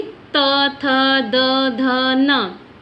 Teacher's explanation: त वर्ग के उच्चारण में दांत पे जो दांत है वहाँ पे ये स्पर्श करती है।